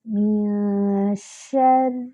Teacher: نون پر اخفا کریں گے، 2 حرکات برابر۔ شری، را پر شد ہے، جمع ہوگا، را کے نیچے کسرہ ہے تو اس کو باریک کریں گے۔